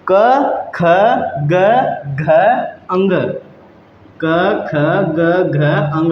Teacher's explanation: ये व्यंजन जो हैं ये कंठ की सहायता से बोले जाते हैं, गले की सहायता से बोले जाते हैं